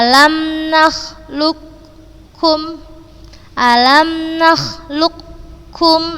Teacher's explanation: ini huruf qaf sukun Kemudian bertemu dengan huruf Kaf yang berharakat Maka langsung kita baca ke huruf yang berharakat dan tanpa guna